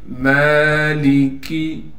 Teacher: میم پر کڑا زبر ہونے کی وجہ سے میم کو ایک الف کی مقدار کھینچیں گے۔